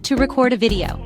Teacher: When you stress the first syllable, it becomes a noun, as in a record of events. But when you stress the second syllable, it turns into a verb, as in to record a video.